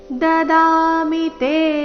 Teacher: ದಾಮಿ ದ ದೀರ್ಘ ಮಿ ರಸ್ವ